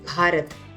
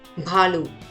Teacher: sound of bha is pronounced as bh with a strong breath